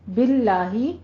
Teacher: باللہ لفظ جلالہ ہے، باریک پڑھنا ہے